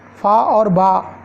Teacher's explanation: प्रत्येक व्यंजन वर्ग के द्वितीय और चतुर्थ व्यंजन महाप्राण होते हैं